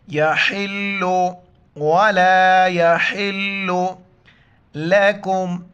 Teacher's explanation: ہا کو گلے سے ادا کر کے لام کے ساتھ ملائیں گے